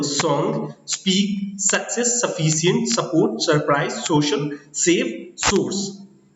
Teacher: like स, ये simple स है, दंतव्य स जिसको हम लोग बोलते हैं वो स है